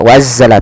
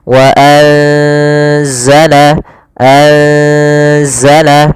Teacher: Yaitu di sini kita mendapati ada nun yang berharokat sukun atau yang tidak dikasih harokat bertemu setelahnya huruf zai, yang mana zai termasuk salah satu huruf ikhfa. Maka cara membacanya itu kita samarkan nunnya kepada huruf zai.